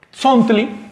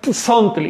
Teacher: Pero cuando la S va precedida de T, forma un solo sonido.